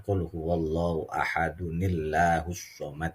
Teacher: kalau dibaca wasal nih ada unnya